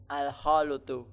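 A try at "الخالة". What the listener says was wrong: Al-khalatu. Iya, bukan al-khalutu. Nah, lamnya di fathah, al-khalatu.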